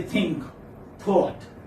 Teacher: this is voiceless dental fricative